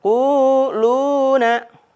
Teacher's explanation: waw sukun berharokat dhammah sebelumnya. Jadi dibaca panjang, diayun 2 harokat. Quluna, lu juga mad tabi'i.